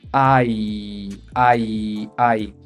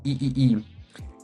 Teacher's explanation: es un diptongo de hecho es Ay ay ay podemos decir que termina en I sonido vocal I